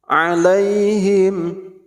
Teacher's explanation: Ain dan ha ini makhrijul hurufnya min wastil halqi, dari tengah tenggorokan